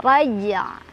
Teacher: Jangan lupa jim dibaca sebagaimana mestinya sama ketika wasol ya. Jadi pantulannya harus tetap ada dan huruf terakhir ain harus tetap dibaca ya.